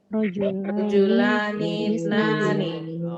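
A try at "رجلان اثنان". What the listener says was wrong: Rajulanithnani. Itu hamzahnya hamzah wasal kan Ibu ya? Jadi langsung rajulanithnani.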